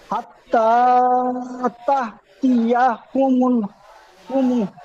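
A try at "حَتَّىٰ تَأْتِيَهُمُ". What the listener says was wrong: আচ্ছা, ইজরা করবার সময় একটু মিস্টেক হয়েছে, মিমের উপরে জাবার এসেছে বলেছেন, মিমের উপরে পেশ আছে। একটু পেশ আছে, জাবার পড়ে দিয়েছেন।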